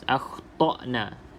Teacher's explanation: pastikan Hamzah ini keluar pada halkum bahagian yang bawah sekali ha bahagian pangkal bahagian paling bawah akna iaitu tempat keluar huruf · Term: huruf hamzah yang mati